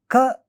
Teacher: And then when we look at it according to the places where they originate, ka originates at velum, therefore it is called a velar sound.